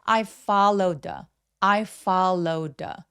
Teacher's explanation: 연음에서 정말 중요한 부분인데요. Followed의와 the의 th더 소리가 혀의 위치가 매우 가까워요. 그래서 한 번만 소리 내 주시면 됩니다. · 심지어이 관사의 th 소리는 울림이 있는데요.이 울림이 있는 보통 원어민들도 a b c d에 d처럼 발음을 합니다. 그래서 followed the가 아니라 followed 하면서 d로 그냥 연음해 주시면 자연스러워요.